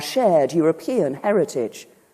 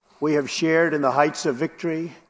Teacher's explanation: In the words shared, hard, and work, most Brits will not pronounce the R sound, but most Americans will. And proud of our shared European heritage.